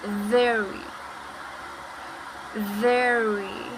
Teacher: the R needs to be strong enough and the lips will come forward and the tongue is back,